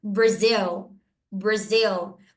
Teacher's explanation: É como se eu estivesse dizendo bra, mas esse bra, ele tem uma quebradinha, né? Porque esse R, ele é aquele R molhado. Então não é bra, é bra. R bem molhadinho, de porta. Então, bra, e depois eu digo Brazil.